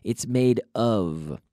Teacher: The F and the V, the only difference is the V is voiced, it's vocalized. But in the case of the word of, in the case of the word of, it's pronounced like a V. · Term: V sound